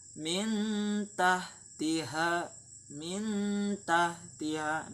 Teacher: nunnya itu kan dia jelas, namun dia didengungkan